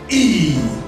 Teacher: it's a front vowel sound which is produced with the front part of the tongue raised to a height just below the closed position while the leaves are spread that is why pronouncing this sound